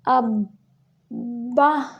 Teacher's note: تھوڑی دیر ملائیں گے تاکہ دونوں حروف کی ادائیگی ہو جائے، یعنی دو حرکات عربیہ جتنا اس کو ملانا ہوتا ہے، 2 سیکنڈ جتنا